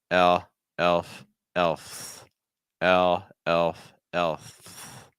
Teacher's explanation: It's an eh linking with a dark L. Tip here. Tip of your tongue down, back your tongue a little higher.